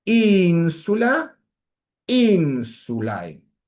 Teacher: Los femeninos a y ae, atención al diptongo ae, se tiene que pronunciar todo junto y no puede afectar el acento de la palabra.